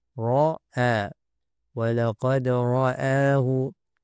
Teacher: Hamzah tidak boleh mengikut ra yang tebal.